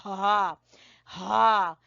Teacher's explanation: गले के सबसे आखिरी हिस्से से अदा होता है हा